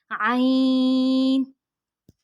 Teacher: عین حلق کے درمیان والے حصے سے ادا ہوتی ہے